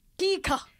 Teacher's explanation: the very explosive consonant, the long first syllable then a very short one that closes the word